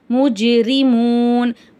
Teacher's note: சுக்குன் பெற்ற ஜீம் வருது ஜீம் வந்து கல்கலா உடைய எழுத்து அதனால அசைச்சு ஓதணும்